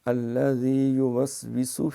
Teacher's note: ذال جو ہے اس میں سیٹی نہیں مارنی